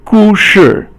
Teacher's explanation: 故 is fourth tone, and 是 is 轻 声, so it doesn't have a tone to it